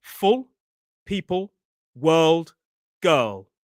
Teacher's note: The dark L, the back of the tongue rises.